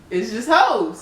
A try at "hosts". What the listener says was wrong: Hosts. Make sure that you get the T and the S in there. Yeah, hosts. Plural.